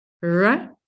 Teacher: And English English, you already said, using all these linguistic terms, so it's an alveolar sound. So in English English, we raise the tip of our tongue towards the area behind our front teeth